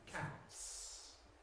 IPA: kæts